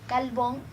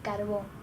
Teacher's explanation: También encontramos la confusión eventual de las consonantes líquidas R y L.